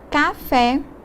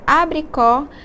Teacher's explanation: essas palavras receberam um acento agudo representando uma pronúncia aberta além da tonicidade